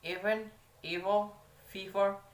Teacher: a voiced labiodental fricative sound